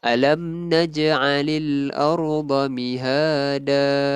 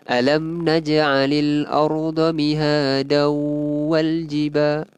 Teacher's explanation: Kita berhenti pada bacaan tanwin, akan jadi mad iwad dua harakat.